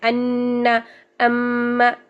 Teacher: ہم 2 سیکنڈ کے برابر ان کے اوپر غنہ کرتے ہیں، یعنی ناک میں گنگنی سی آواز کو ٹھہراتے ہیں